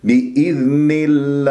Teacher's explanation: ترقق اللام من غير إمالات الألف